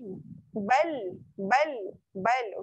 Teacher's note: lam dia ada sifat tahan angin, jadi kena hold dekat hujung lidah cucuk gusi. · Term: lam yang bertanda sukun